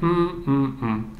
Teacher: when you get a sequence like mid low low you don't rush to say you get mmm it goes down gradually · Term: low tone